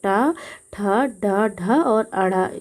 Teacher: अगर हम टा वर्ग की बात करें तो टा वर्ग का अगर हम उच्चारण स्थान देखें तो मूर्धन्य है। ठीक, अगर टा वर्ग में जो वर्ण है उन्हें देखें कौन कौन सा वर्ण आता है, तो टा, ठ, ड, ढ और अड़ा, ये उसके आते हैं।